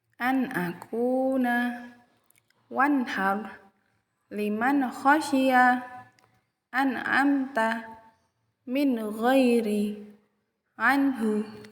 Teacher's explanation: dibacanya harus jelas tanpa disertai dengung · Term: idhar halqi